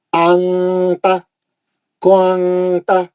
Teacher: آواز کو ناک میں لے کے چلے جانا, غننے سے پڑھنا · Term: اخفا